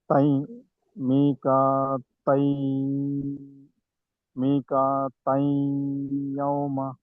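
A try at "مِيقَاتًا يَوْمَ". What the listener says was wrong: ఇలా దీర్ఘం తీయాలి అక్కడ గున్నా చేయాలి. యవమ ఈజీ ఉన్నా చేయట్లేదు ఎందుకునో మరి.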